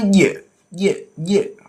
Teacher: kalau jim membacanya posisi lidahnya di tengah-tengah antara langit atas dan bawah